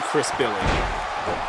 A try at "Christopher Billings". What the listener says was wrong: It's Christopher Billings. You said Chris Billing.